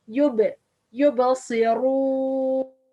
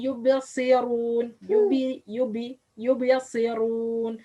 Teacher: Ba which have sukun or has sukun should be made qalqala.